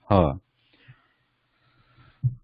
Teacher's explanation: ha is guttural, it's originating from the back of the throat, ha, but it is sibilant, requiring warm breath.